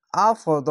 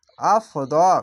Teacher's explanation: খাড়া যাবার এক আলিফ টেনে পড়বেন। হামজা ফা যাবার আফ, দদ খাড়া যাবার দ, আফদ।